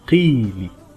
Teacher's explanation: Qaf, kasra, qi. When it's followed by ya mad, we have to extend the kasra sound. Qi becomes qi.